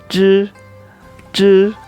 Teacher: Cara bacanya seperti ini, ZH. J, J, lidahnya digulung ke atas, jadi agak bindeng suaranya